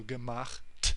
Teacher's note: the t, which is pronounced at the front of your mouth